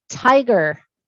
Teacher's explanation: for almost every word the vowel consonant vowel like tiger um the first vowel is stressed it's an open vowel it's a long vowel